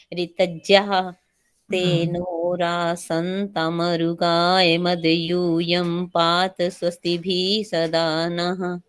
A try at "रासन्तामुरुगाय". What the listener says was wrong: रासंताम, आ की मात्रा, रासंताम रुगाय मध्य